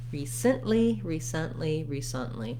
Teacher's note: recently is another example of first syllable stress where the letter e does say the e sound and then